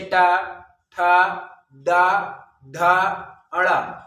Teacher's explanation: ऊपरी वाले छत में टा, ठा, डा, ढा, अड़ा बोलते समय वो हमारी जीभ जिस स्थान पर ठोकर मारती है उस स्थान को मूर्धा कहते हैं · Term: मूर्धन्य व्यंजन